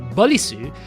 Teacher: the R sound in Japanese is between the R and the L